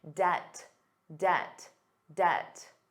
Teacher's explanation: Did you notice the B was silent?